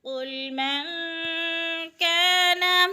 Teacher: من پہ اخفا ہو رہا ہے، نون ساکن کے بعد، کاف حروف اخفا میں سے ہے تو اخفا کریں گے، یعنی ناک میں آواز لے جائیں گے۔ قل من کان، کا پہ الف مدہ بھی ہو رہا ہے، الف خالی سے پہلے کاف کے اوپر زبر ہے تو الف مدہ۔